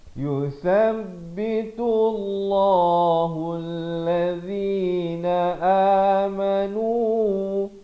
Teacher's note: Lafzul jalalah dibacakan dengan tebal di sini, dua harakat.